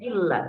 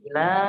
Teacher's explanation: Jadi di sini ila, la-nya itu tanpa ada tekanan huruf lamnya